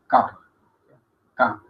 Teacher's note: Esa es velar. Es decir, la pronunciamos con la parte trasera de la lengua tocando la campanilla